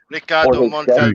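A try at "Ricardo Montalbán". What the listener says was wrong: Ricardo. You must roll your R's there.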